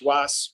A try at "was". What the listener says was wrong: Did you hear that reduction? Listen to how he pronounces the word was. Listen, he puts so much attention on it. Listen, first of all, he puts so much attention on the W sound, and then he blows it up and gives it all sorts of pitch and just so much attention.